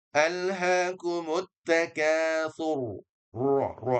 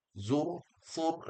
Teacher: rnya ini karena dia r mati sebelumnya dhammah maka dia punya hak untuk ditafkhimkan, ditebalkan ya. Alhaumut takur ro rnya tebal ya.